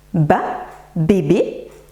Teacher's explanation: les cordes vibrent, c'est un phonème sonore